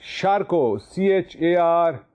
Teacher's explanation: The T at the end is silent.